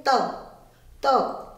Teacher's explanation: त जीभ हमारी दांत से टकरा रही है, तो त का उच्चारण स्थान हुआ दांत या दंतः।